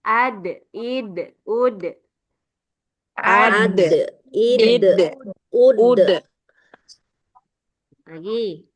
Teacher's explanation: ujung lidahnya jangan sampai dia keluar atau naik ke langit-langit atas, tapi dia sangat menempel ya karena belakang ini pangkal gigi seri atas dud di du. Ah, nanti keluarnya suaranya kalau enggak nempel pada pangkal gigi seriat ini berbeda ya suaranya.